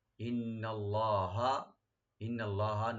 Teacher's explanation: নুন মুসাদ্দাদ ওয়াজিব গুন্না, লফজে জালালা মোটা হবে